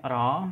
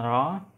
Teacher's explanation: tempat artikulasinya alveolar ya, dan cara artikulasinya dia rolled seperti yang tadi saya jelaskan, dan klasifikasi bunyinya dia adalah majhur.